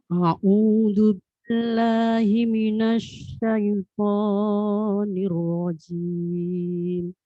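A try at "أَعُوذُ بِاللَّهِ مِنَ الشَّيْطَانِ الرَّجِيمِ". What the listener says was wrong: Lo-nya sedikit kepanjangan. Au, la, lo. Itu sama panjangnya. A'udzu billahi minasyaitonir. Tidak boleh 2 dari harakat. Tidak boleh lebih dari 2 harakat, 2 ketukan. Sedikit kepanjangan. Namanya Ini sudah kalau orang ini kalau dalam ilmu tajwid kekenyangan sudah. Tashbihul harakat. A'udzu billahi minasy syaithanir rajim.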